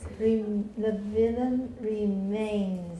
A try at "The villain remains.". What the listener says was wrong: There we go, but villain needs more E. Yeah. The villain remains.